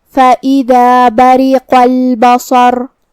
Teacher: صاد حروف التفخیم میں سے ہے تو ہمیں یہ حرف کو بھاری آواز میں پڑھنا ہے. آخری میں حرف الرا پہ رکیں گے تو اس پہ جزم سے رکیں گے، لہذا ہمیں را کو ظاہر کرنا ہے